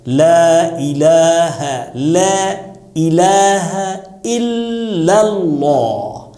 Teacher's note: سارا لا جو ہے لا الہ الا اللہ میں سب پتلا ادا کیا جائے گا، لیکن اللہ والا جو ہے وہ موٹا ادا کیا جائے گا. لا الہ الا اللہ، یہاں پہ یہ موٹا ہو جائے گا.